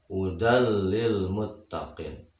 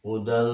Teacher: Nah, contoh, tanwin bertemu dengan huruf idgham bila gunnah, hudal lil muttaqin. Tanwin bertemu dengan lam yang bertasdid, jangan didengungkan atau ditahan.